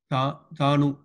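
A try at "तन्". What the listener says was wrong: Not U. Where is U? The vowel sound U. Therefore, it is Tan. Ta. Ta is Takara plus A. So A is Tan is Takara plus A. And Nakara is that. So Tan, you can say. So Tan is equal to Takara plus A plus Nakara.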